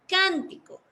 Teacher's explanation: La sílaba más fuerte es can.